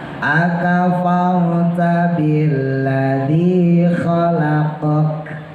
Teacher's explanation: Rohnya tebal ya, karena setelah fathah.